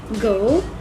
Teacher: This is what we call the velar, or the top of the throat. The tongue articulates with a soft palate, which is located at the back of the roof of the mouth.